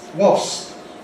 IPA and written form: wɒsp (wasp)